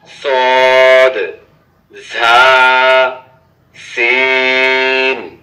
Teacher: জিহ্বার আগা সামনের নিচের 2 দাঁতের আগার সঙ্গে লাগাইয়া সদ ঝা সিন